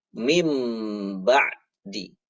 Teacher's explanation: bunyi huruf nunnya ini diganti dengan bunyi huruf mim